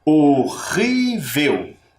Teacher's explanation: nós percebemos que a sílaba tônica está aqui no meio, na penúltima, e aqui ele recebeu um acento.